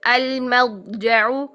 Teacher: ضاد کے لیے قلقلہ نہیں کرنا ہے